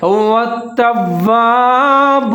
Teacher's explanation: واو کے اوپر تشدید ہے، تا اور واو پھر ملا کے پڑھیں گے، مضبوطی کے ساتھ پڑھیں گے